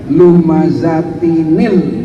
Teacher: Solusinya di sini harus diberikan harokat. Dikasih harokat yang tanwin yang notabene adalah nun sukun, maka dibacanya lumazatinil.